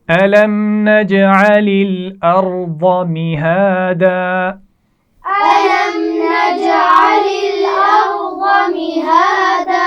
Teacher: نَجْعَلِ جیم پر قلقلہ ہوگا · ارض را موٹی پڑھی جائے گی، ضاد بھی موٹا پڑھا جائے گا. ضاد کا مخرج ہے زبان کا کنارہ اور اوپر کی داڑوں سے لگا کر یہ ادا کیا جاتا ہے.